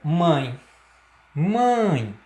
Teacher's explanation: Você percebe que há influência nasal, há influência, há emissão de ar também pelo nariz, tá? O próprio tio aí, sobre sobre a vogal A, ele indica a nasalização dessa pronúncia, tá? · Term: Ditongo nasal